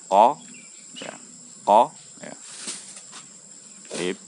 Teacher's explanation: Jadi huruf qaf ini tidak mengeluarkan udara. Jangan mengeluarkan nafas atau udara ya. Kalau sampai dikeluarkan menjadi qa, qi, qu, nah itu keliru.